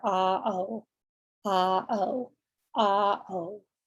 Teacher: Your next sound is going to be long O. So your mouth is rounded again. And if you go from ah to O, oh, I mean, you can feel a pretty significant change there.